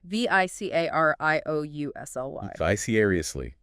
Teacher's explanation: Another 5-syllable word. Stress on the second syllable.